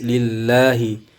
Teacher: Lillahi di sini lafzul jalalah karena huruf sebelumnya berharokat bawah atau berbaris kasrah, maka hukumnya menjadi lam tarqiq atau lam tipis, maka dibaca tipis